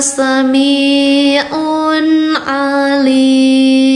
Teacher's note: I-nya ada empat. Dibacanya panjang empat harkat.